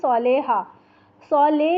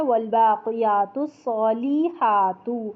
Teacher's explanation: اب یہ صالحہ، صالح اس لفظ جو ہم اردو میں بھی بولتے ہیں تو اکثر ہم بولتے ہیں صالحہ، صالح نہیں پڑھنا، لام زیر لے نہیں ہوتا، لام زیر لی ہوتا ہے